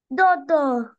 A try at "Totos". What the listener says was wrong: We have S, look, Totos.